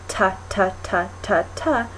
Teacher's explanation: And then the sound T, ta, ta, ta, ta, ta, you are taking the tip of your tongue to the roof of your mouth.